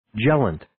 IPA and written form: ˈje-lənt (Gellant)